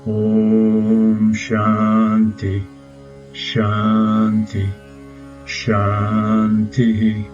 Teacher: Shanti means peace, and the last letter of the word Shanti is a Visarga. So the last Shanti on the line is pronounced Shantihi, echoing the vowel before the Visarga